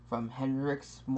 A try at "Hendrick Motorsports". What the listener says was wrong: From Hendrick. No, it's not Hendrick's. It's Hendrick. It's Hendrick Motorsports.